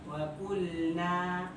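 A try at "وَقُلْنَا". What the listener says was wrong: Nah, ujung aja ujung. Kalau ini antum masuk ke makhrajnya lam tapi bunyinya nun. Terlalu berat.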